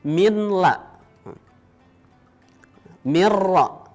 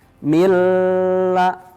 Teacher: Ini hurufnya ada 2, yaitu huruf lam dengan huruf ra. Bunyi nunnya masuk dengan tak dengung mengikuti huruf yang ditemui berikutnya. Masuk namun tidak berdengung. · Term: idgham bila gunnah